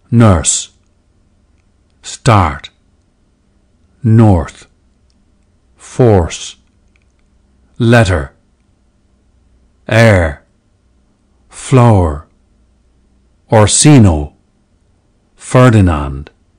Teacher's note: early modern English, EME, was a rhotic dialect, with heavy R coloration of vowels that are followed by R. The silent R of today's received pronunciation, standard British English, is a more recent development.